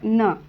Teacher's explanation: तर न हे अनुनासिक आहे जे की त च्या वर्गामध्ये येत